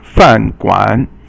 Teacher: Fan is fourth tone, and guan is third tone